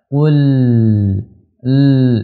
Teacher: Lam memiliki sifat tawassut, yaitu mengalir, dia asli alirkan suaranya. Qul, dialirkan.